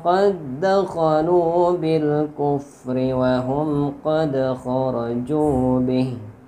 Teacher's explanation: dal mati bertemu dal sama makhraj dan sifat, jadi dibaca diidghamkan tanpa guna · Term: idgham mutamatsilain